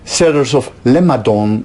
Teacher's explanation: changes into a nasal m and then a non-nasal d so it's as if the feature nasal moves from the n to the b